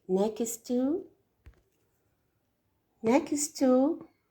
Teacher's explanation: next two we notice that the last in next plus T here they will make one t sound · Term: linking